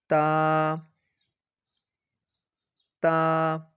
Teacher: زبان کی نوک جب اوپر کے اگلے دو دانتوں کی جڑ کی طرف والے آدھے حصہ سے لگے۔